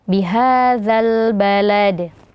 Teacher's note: bunyi Qalqalah itu jangan sampai ada tambahan huruf hamzah setelahnya · ada huruf dal yang disukunkan karena waqaf, maka di sini dibaca menjadi qalqalah kubra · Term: Qalqalah Kubro